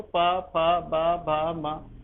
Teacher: सिर्फ हमारे दोनों आपस में होंठ टकरा रहे हैं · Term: ओष्ठ व्यंजन